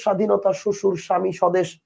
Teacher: ফলার বের তো উচ্চারণ নাই